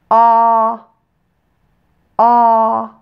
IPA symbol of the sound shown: ɑ